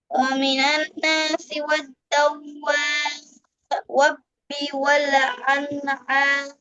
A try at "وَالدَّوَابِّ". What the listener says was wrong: আপনি বলে ফেলেছেন, খেয়াল করেন, আপনি বলে ফেলেছেন কি জানেন? ওয়াদ্দা, ওয়াদ্দাওয়াবি, এই ওয়াওর উপরে তাসদিদ নাই। ওয়াদ্দাওয়াবি, ঠিক আছে? এই ওয়াও যে বাকে ধরছে, ওয়াদ্দাওয়াবি, ঠিক আছে?